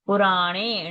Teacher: Na is a Murdhani Nakara. Touch the tongue to the roof of the palate.